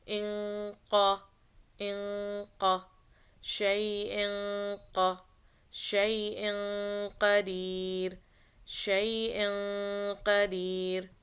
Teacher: it's called ikhfa when you are doing the nasalization sound and going into the makhraj of the next letter